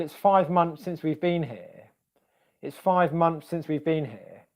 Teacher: this TH sound becoming more like the S sound to make it basically easier to say than the next sound that comes after it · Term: assimilation